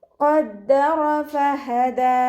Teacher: ഖദ്ദറ ഫഹദ ഫ ലൈറ്റ് ആക്കിയിട്ട് ഉച്ചരിക്കാൻ ശ്രദ്ധിക്കുക. ഹഇൻ്റെ മഖ്റജ് അഖ്സൽ ഹൽക്കാണ്, സൗണ്ടിനെ വ്യക്തമാക്കി കൊടുക്കുക. അവസാനത്തിൽ നിർത്തുമ്പോൾ 2 കൗണ്ട് നീട്ടി നിർത്തി കൊടുക്കുക കേട്ടോ.